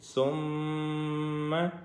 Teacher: ثم عرضهم، میم کے اوپر تشدید ہے جس کی وجہ سے ہم یہاں پہ غنہ کریں گے، ثم، اور سا کو باریک پڑھیں گے، سیٹی کی آواز اس میں نہیں آئے گی